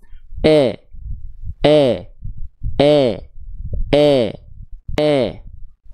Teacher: Saya akan lafalkan vokal I tapi tanpa mengangkat bagian tengah lidah